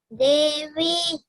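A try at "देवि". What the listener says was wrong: Devi, no elongation. Devi.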